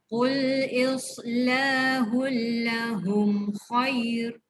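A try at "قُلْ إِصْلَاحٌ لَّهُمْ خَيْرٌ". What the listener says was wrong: Khair panjang. Jadi maklin.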